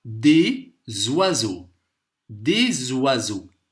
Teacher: Ici, le S, il se prononce comme un Z. Z. On va dire des oiseaux. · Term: liaison